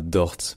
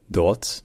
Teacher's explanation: souvent le R en allemand, cette position-là, devient un peu vocalisé, c'est-à-dire que ça devient une sorte de A, donc ce n'est pas Dort, mais Dort.